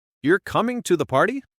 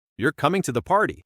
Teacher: We'll say the sentence both ways. First as a real question with rising intonation. Ready? You're coming to the party. Now as a statement of fact with falling intonation.